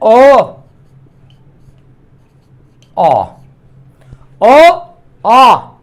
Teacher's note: जिन स्वरों के उच्चारण में मुख पूर्ण रूप से खुला रहता है वो विवृत स्वर कहे जाते हैं।